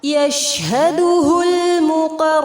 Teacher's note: یشہدہ المقربون، شین ساکن پر ہمس کریں گے، لام لام قمریہ ہے، قاف اور را کو پر کریں گے اور مد عارض کے ساتھ وقف ہوگا